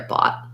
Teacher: So building it from the vowel, ah, bought. And then we just have a T. We might make a stopped T there